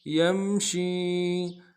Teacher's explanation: أَمَّن یمشی، یا کو میم کے ساتھ ملانا ہے، میم ساکن غنہ کریں گے. شین کو یا کے ساتھ ملانا ہے، یا مدہ ایک انداز میں کھینچیں گے.